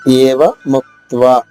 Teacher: ఏవ ముక్త్వా ఏ గొంతు నుంచి రావాలి. ముక్త్వా మూడు హల్లులు కా త వా దీర్ఘంగా.